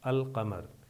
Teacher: قمر پر جب ال لگاتے ہیں تو لام کی آواز ظاہر کی جاتی ہے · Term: حروف قمری